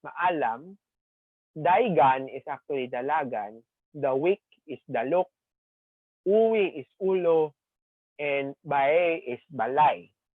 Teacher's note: this phonological peculiarity in which the L, okay, becomes a W or a Y